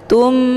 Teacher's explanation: mim sukunnya langsung dimasukkan ke dalam huruf mim yang bertasydid dengan cara ditekan kemudian ditahan lebih kurang 2 kali ketukan. Tummu, jadi dibacanya itu sambil didengungkan. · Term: idgham mimi